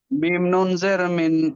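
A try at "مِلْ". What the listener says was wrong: না না না না না না না না না না না, হয়নি, মিম নুন কেন আসবে এখানে? মিম লামের সঙ্গে হবে তো। মিল।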